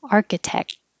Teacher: I don't say the K, but my tongue goes to the K position and then touches the top of my mouth completely to stop the airflow.